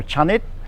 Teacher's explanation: You need to put in an implied vowel after the first consonant, so that's be a ch, and then the dordek as a final consonant is pronounced as an unreleased t